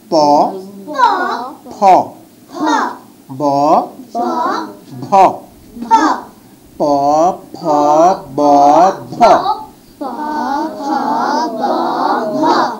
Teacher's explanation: দুই ঠোঁট লাগিয়ে এই শব্দগুলো উচ্চারণ করতে হবে